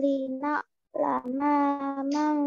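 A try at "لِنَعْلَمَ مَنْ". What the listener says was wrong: Nanya pendek nak.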